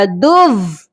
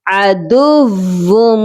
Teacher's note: दाल को वाव मुशद्दद के साथ सख्ती से मिलाना है, हमने यहाँ गुन्ना नहीं करना।